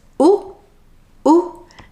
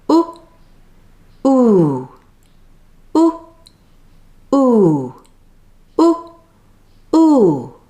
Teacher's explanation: my lips are rounded exactly the same way for both sounds, but one sound is longer than the other. The jaw is only slightly open, like this.